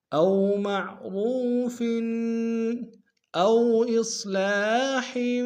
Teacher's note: او میں واو لین ہے بغیر کھینچ پڑیں گے